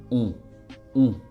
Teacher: Everything is going to happen in the nose. The shape of your lips is the same as when you say the letter O.